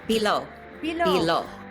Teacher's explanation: with a shorter O at the end and a longer E in the middle.